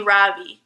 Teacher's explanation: in America people call me Ravi with the stress on the first syllable